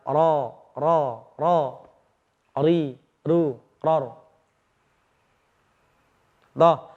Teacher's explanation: kita menggetarkan lidah kita cukup dengan dua getaran saja. Kita perkirakan dua getaran. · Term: takrir